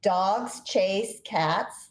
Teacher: The first sentence, 3 syllables, dogs chase cats, takes the same amount of time to say as the last sentence